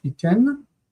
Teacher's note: This is one of the special ones where the nun assimilates into the taf